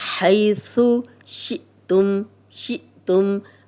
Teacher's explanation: عند بارئکم حیث، حی، یا لین ہے جزم والی یا، ہا پہ زبر، تو اس کو بغیر کھینچے نرمی سے پڑھیں گے ہم. ثا نرم حرف ہے تو اس میں سیٹی کی آواز نہیں آئے گی.